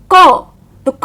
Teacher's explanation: इनको स्वर की सहायता से बोला जाता है जैसे क तो क में अ छुपा हुआ है